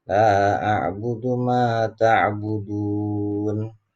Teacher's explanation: Tetapi kalau kita matikan, karena ini ada di akhir ayat, maka hukumnya adalah mad arid lis sukun, panjangnya sampai 5-6 harakat, jadi agak panjang